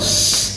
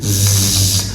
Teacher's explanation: the sound se is a fricative sound, alveolar sound, and voiceless sound.